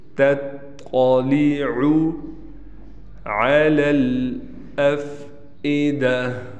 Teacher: التی تطلع، یہاں یہ خیال کرنا ہے کہ تا کو باریک رکھنا ہے، طا کو ہم نے موٹا پڑھنا ہے